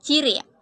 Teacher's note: Bunyi C dengan ciri-ciri mati, oral, laminopalatal, afrikatif dengan contoh kata ciri.